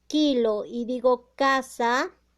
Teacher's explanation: se va a unir el dorso de la lengua va a desplazarse más hacia lo que es la zona velar